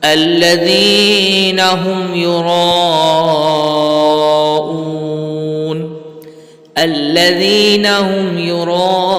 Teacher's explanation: اب یہاں پر بھی الذین کے اندر ذال میں نرمی کریں گے. ہم یراؤون، یرا یہاں پر مد متصل کا قاعدہ لگ رہا ہے، اس لیے یہاں پر اس کو کھینچیں گے، اور مد عارض کا قاعدہ بھی ہے، تو یہاں پر اس لیے اس کو کھینچ کر پڑھا جائے گا.